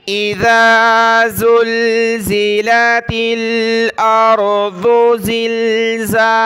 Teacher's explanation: زال پر ہم نے زبان نکالنی ہے ، زا کو دانت ملا کر سختی کے ساتھ پڑھنا ہے۔